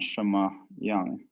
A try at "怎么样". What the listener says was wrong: 怎么样? 怎么样, yeah. You're saying like, it sounds like you're saying 什么样. 什么样? It's 么样?